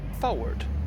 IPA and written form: ˈfʌwɚd (forward)